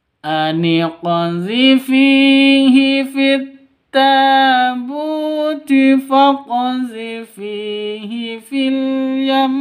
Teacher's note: Terus yam itu ditahan sampai dua ketukan karena waqaf, gunnah musyaddadah